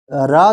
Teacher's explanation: जो रा है दोस्तों यह लुंठित ध्वनि है